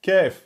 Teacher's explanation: Le Kef est plus en avant.